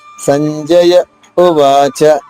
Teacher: సంజయ ఉవాచ సా పైన ఆఘాత్ తీసుకుంటూ జ్ఞాలో జ్ఞా ప్లస్ జ ఈ సంయుక్తాక్షరంలో జ్ఞా ద్విత్వం చేసుకుంటూ సంజయ తర్వాత కొంచెం సేపు ఒక ఫ్రాక్షన్ ఆఫ్ సెకండ్ ఆగి ఉవాచ ఉ గొంతు నుంచి రావాలి